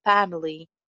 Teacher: A sound ko thoda sa lamba bolenge, family.